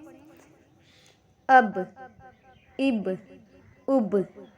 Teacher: اب غور کریے، ہم نے پڑھا اب، تو اب با ادا کہاں سے ہوا، نکلا کہاں سے؟ دیکھیے، ہونٹ کے دونوں گیلے حصے جب آپس میں ملے تب جا کر با ادا ہوا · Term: با کا مخرج